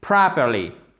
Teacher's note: Accent tonique sur la première syllabe. Et c'est un A long. Le O, c'est pas properly.